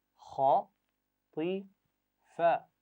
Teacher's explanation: खा और ता, इनकी आवाज़ें मोटी अदा की जाती हैं, और फा की आवाज़ बारीक है आखिर में